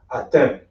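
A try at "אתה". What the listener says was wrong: And remember, there's no E sound in Hebrew. There's no E.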